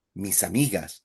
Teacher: It sounded like one word, mis amigas, because you're linking misa, mis amigas. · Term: link it